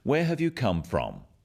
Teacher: notice also the falling tone with these questions where have you come from this makes the question sound friendly